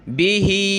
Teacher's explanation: ما أمر الله، ما أمر الله به، ہاں پہ یہ کھڑی زیر ہے اور مد ہے تو نیچے کی طرف کھینچیں گے